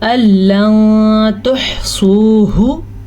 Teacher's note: سواد کو پر پڑھنا ہے اور ہا کے تلفظ کا بھی خاص خیال رکھنا ہے